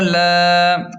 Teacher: لام کھڑا زبر لا، اب لام کو ایک الف کے برابر کھینچیں کیونکہ کھڑا زبر ہے